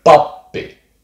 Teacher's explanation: it's one of those consonants that has a tiny pause in between the consonants themselves